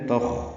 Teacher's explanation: یہ خا پر ہے، حروف مستعلیہ میں سے ہے اور اس پہ ہمس بھی ہے، تخ یعنی سانس جاری رہتی ہے اس کے پڑھنے میں